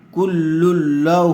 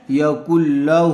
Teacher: ہا الٹا پیش ہو، کل لہ۔ الٹا پیش برابر ہوتا ہے واو مدہ کے، اس لیے ہا کو تھوڑا کھینچ کر پڑھیں گے